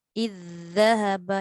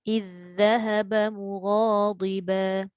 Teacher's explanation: Dan pastikan ketika kita menyebut kedua-dua huruf zal tu, hujung lidah keluarkanlah sebab itu adalah makhraj dia.